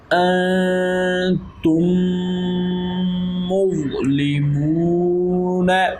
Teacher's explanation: حروف اخفاء میں سے تا آ رہا ہے، تو اس لیے یہاں پر اخفاء کا قاعدہ ہے، یہاں پر ہم غنہ کریں گے